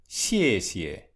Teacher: The X sound is pronounced with the dorsum of the tongue and not the tip.